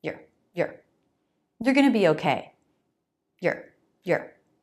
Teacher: This is a natural pronunciation. You are, your, reduces to your. Super fast. Basically, no vowel.